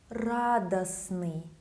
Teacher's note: Again, T is not pronounced.